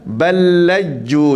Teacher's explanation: Balalaju, tak, matikan lam, masukkan lam ke pertama ke lam yang kedua dengan tasydid dia, maka kita baca balaju.